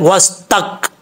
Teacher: सीन के बाद ता है, ये ता जो 2 नुक्तों वाला ये बरीक पढ़ा जाएगा। इसका मखरज है ज़ुबान की नोक ऊपर वाले दांतों की जड़ों से लगे तो ता पढ़ा जाता है, वस तक। आगे ता के बाद काफ है, ये काफ बरीक पढ़ा जाएगा।